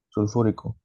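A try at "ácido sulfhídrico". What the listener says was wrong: no, la terminación es hídrico. Sulfídrico. Tiene que haber terminación hídrico, sulfídrico.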